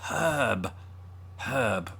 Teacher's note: we don't pronounce the R in herb as Brits either. Unless you're from the West Country.